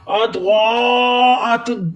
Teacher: ضاد حروف مستعلیہ ہے، حروف مستعلیہ وہ حروف ہوتے ہیں جن کو موٹا کیا جاتا ہے۔